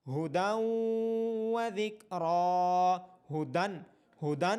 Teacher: کتابا یلقاہ ھدی وذکری، ھدن، ھدن لفظ ہے، اس کے آخر میں جو نون ساکن کی آواز آ رہی ہے تنوین کے بعد حروف یرملون میں سے واو ہونے کی وجہ سے نون ساکن کی آواز واو میں مرج ہو رہی ہے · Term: ادغام